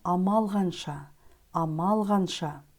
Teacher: звук к произносится как г Потому что перед ним стоит сонорный согласный звук л